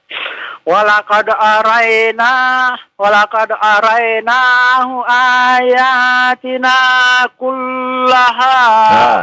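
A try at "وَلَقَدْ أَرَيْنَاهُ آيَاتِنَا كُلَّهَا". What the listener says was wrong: Kullaha, jangan dipanjangkan ya. Tasydid dengan lam jangan dipanjangkan. Jangan kullaha. Panjangan itu Pak ya.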